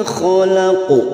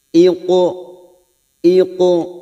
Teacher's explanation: Nah, untuk huruf qaf ini pantulkan secara isti'la sehingga bunyi suara menjadi tebal. Ini berbeda dengan huruf yang lain. Posisi lidah bagian belakang naik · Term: qalqalah sugro